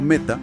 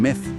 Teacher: cuando la letra T de la primera palabra choca con esa aspiración, la consonante se aspira también. Pasa de ser una tau a ser una teta que suena como una t.